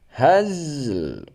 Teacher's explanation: Lamnya tetap nampak, zai sukun juga nampak ya.